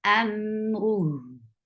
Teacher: when ha is with sukoon, it will get sifa of rakhawa, and rakhawa is a flow of sound. The sound should flow. Amruhu. How will you stop?